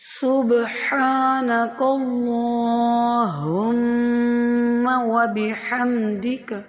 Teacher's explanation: یہاں پہ باریک سیٹی والا سین ادا کریں گے اور با پر قلقلہ کریں گے، کیوں؟